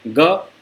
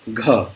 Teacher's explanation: ज़्यादा हवा दे करके बोलेंगे, ज़्यादा एयर के साथ फ्रिक्शन करेंगे तो ग को हम लोग घ बोल देते हैं